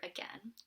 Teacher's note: the vowel is a mid central vowel which means that the tongue is exactly like in the middle of the mouth it's not too far or not too back not too high not too low